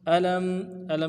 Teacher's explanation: लाम को मीम साकिन के साथ मिलाना है, मीम साकिन को इजहार से पढ़ेंगे।